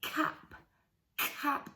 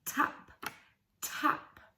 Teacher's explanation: cap being the back sound and tap being the front sound